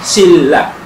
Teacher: So yung N, so before yung L. So shin la is pronounced as shilla. So again, N becomes L. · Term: liquidization